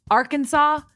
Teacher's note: in 3 syllables, with the final S being silent. The A in each syllable with the Italian sound and the accent on the first and last syllables